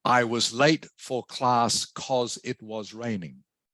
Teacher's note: you will quite often hear in casual informal conversation because becomes cause